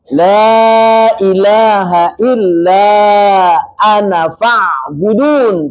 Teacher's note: Ketika wasal ananya dibaca panjang.